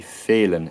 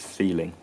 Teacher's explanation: the ng sound was fronted and becomes n. So in or un.